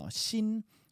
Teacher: my tongue is between my teeth